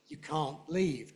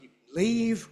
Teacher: the negative is stressed, whereas the positive is typically unstressed, and not only unstressed, usually weak.